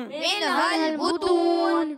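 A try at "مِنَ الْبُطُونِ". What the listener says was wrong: अच्छा, लाम में आवाज को हिलाना नहीं है, मिनहल नहीं। ठीक है, मिनहल मिनहल पढ़ेंगे तो गलत हो जाएगा। माशाअल्लाह, अच्छी कोशिश की आपने, लेकिन बेटा इस बात का ख्याल रखें कि आवाज़ को हिलाकर नहीं पढ़ना।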